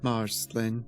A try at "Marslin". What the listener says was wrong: Marslin, there's no pause there. No, there's no pause there. Marslin. But there's no pause. There's no.